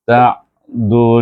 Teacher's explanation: hucong sedikit mulut kita masa menyebut hu dan gabungkan dengan Nun yang bertasdid dibaca dengan wajibul gunah dengan dengung